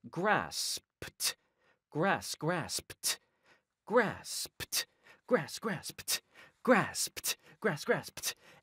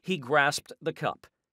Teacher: because it ends in a d and it follows an unvoiced consonant the d turns into a t